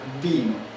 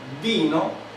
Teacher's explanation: se mueve el labio inferior hacia los incisivos superiores, es decir, así en esta posición, y de esa manera se obstaculiza el aire que viene saliendo de los pulmones. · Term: labidental